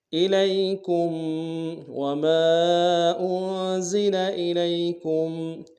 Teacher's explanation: وما انزل الیکم، حمزہ کو نم سے ادا کریں گے، لام کو یا کے ساتھ ملانا ہے، یا لین بغیر کھینچے پڑیں گے، کاف کو میم ساکن کے ساتھ ملانا ہے، غنہ کریں گے۔